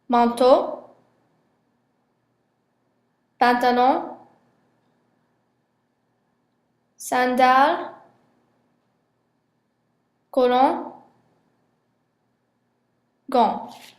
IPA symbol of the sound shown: ɑ̃